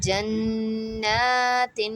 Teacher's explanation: the noon has standing fatha on it, means khadi zabar on it, so we have to stretch that for 1 to 2 seconds